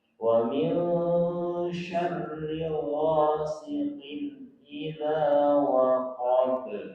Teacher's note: izhar itu bacanya jelas. Jelas di situ tanwin berpisah pakai n, tidak pakai eng.